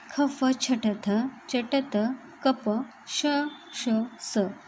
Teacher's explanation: ख फ छटथ चटत कप श श स या सर्वांचा जो प्रयत्न होतो तो विवार, श्वास आणि अघोष होतो